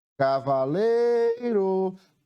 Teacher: Qual foi a sílaba que eu demorei mais tempo pronunciando? Foi o lei. Então, na palavra cavaleiro, o lei é a sílaba tônica dessa palavra, é a sílaba que eu pronuncio com mais intensidade.